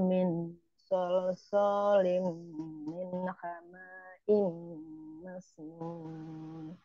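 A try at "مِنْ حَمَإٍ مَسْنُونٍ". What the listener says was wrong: Mimnya tidak dibaca panjang ya, jadi di situ yang panjang itu Hamzah ya, punyanya Hamzah.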